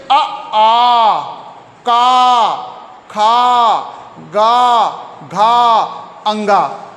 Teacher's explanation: इनका उच्चारण स्थान कंठ से होता है